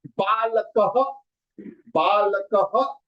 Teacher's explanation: So when it is ka, the visarga will become ha, and it will be kaha. Balakaha. Balakaha.